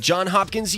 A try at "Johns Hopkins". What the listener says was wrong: Johns Hopkins. Two plurals. You said John Hopkins.